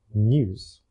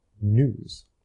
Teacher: the accent in the south of England began to lose the y sound in news, from news to news.